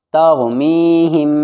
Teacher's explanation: میم ساکن کے بعد با آ گیا تو کیا ہوگا یہاں پر اخفاء شفوی غنّے کے ساتھ